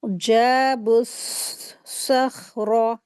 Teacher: با کو صاد میں ملا دیں گے